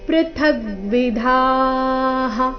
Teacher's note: ಥ ಮೇಲೆ ಆಘಾತ ಧ ಮಹಾಪ್ರಾಣ ದೀರ್ಘ ನಂತರ ವಿಸರ್ಗದ ಉಚ್ಚಾರಣೆಯನ್ನು ಹೇಳಬೇಕು